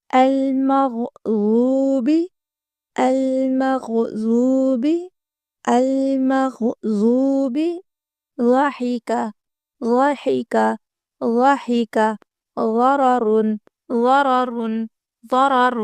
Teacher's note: زبان کی کروٹ کو دائیں یا بائیں طرف والی اوپر کی 5 داڑھوں کی جڑ سے لگائیں تو غاد ادا ہوگا. غاد موٹا اور بھاری آواز کے ساتھ ادا کرنا ہے، اس کو دال یا زا کی طرح نہیں پڑھنا